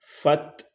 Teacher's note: تا ساکن ہے پہلے سے اور اس کو بالکل نہیں ہلانا، فت یہ اس کی ساؤنڈ ہوگی، فت، اور آگے ہا پہ پیش ہے، لیکن چونکہ ہم یہاں پہ وقف کریں گے آیت کی اینڈنگ کی وجہ سے تو اسے ساکن کر دیا جائے گا۔